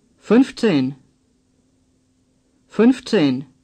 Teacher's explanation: Round your lips for the Ü sound in 15.